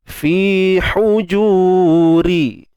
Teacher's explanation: Mulla lam asli, ti mak asli juga, fi mak asli juga, huju ju pun mak asli, ha pedas jangan lupa, sempitkan tengah kerongkong. · ra baris bawah nipis